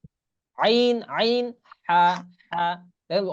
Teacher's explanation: 2 নম্বর মাখরাজ হলকের মধ্যখান হইতে আইন, হা